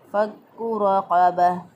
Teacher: फ़क्कु काफ के ऊपर शद है, मज़बूत और क़ुव्वत से अदा किया